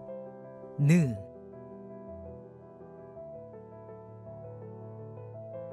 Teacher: 두 번째 기본 자음자 니은 혀끝이 윗 잇몸에 붙는 모양을 본땄다